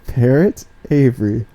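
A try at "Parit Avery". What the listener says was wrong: Not spelled like the bird. It's spelled Parit. Not pronounced parrot.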